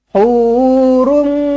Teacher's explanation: Jumpa dengan mim sabdu, rapatkan bibir, dengungkan 2 harakat. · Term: idgham ma'al gunnah